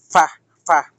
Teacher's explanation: ১৪ নম্বর মাখরাজ নিচের ঠোঁটের ফ্যাট সামনের উপরে ২ দাঁতের আগার সঙ্গে লাগাইয়া